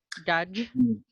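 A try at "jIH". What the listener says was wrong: The J, it should never sound like the G in rouge. It should always sound like the J in Hard. And then your chi was also kind of sounding chi-ish.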